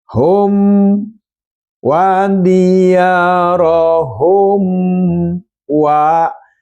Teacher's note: Maka mim ini dibaca jelas berhadapan dengan wawu. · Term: idhar safawi